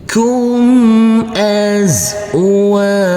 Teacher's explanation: Huruf waw kita baca panjang dengan panjang 2 harokat karena huruf waw yang berfathah a ini bertemu dengan huruf alif yang tidak berharokat.